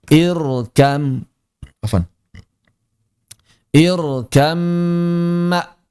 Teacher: bnya hilang 100% langsung masuk ke dalam mim dan mimnya berarti menjadi mim bertasydid. Kalau mimnya sudah bertasydid, maka seperti yang telah kita bahas di bab ghunah, dia berarti menjadi ghunah yang sempurna, maka mesti ditahan dua harakat.